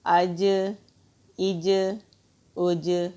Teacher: جیم کلکلا حروف میں سے ہے۔ جیم بھی جب ساکن ہوتا ہے تو اس پر بھی ہم کلکلا کرتے ہیں۔